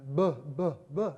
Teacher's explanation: But then you can voice it. That is, you can activate the larynx as the air goes by, and then you get a voiced plosive or bilabial consonant